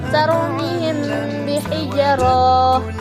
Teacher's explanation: Ikhfa syafawi adalah menyembunyikan atau menyamarkan huruf mim. Hukum bacaannya disebut ikhfa syafawi apabila mim sukun bertemu dengan huruf ba. Maka cara membacanya harus dibunyikan samar-samar di bibir dan didengungkan